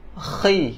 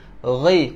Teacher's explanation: huruf ghain dia betul-betul dekat atas kerongkong kita. Okey, bukan macam huruf khaf. · Huruf khaf khi, dia macam nak buang kahak, yang ni ghi, kuat sikit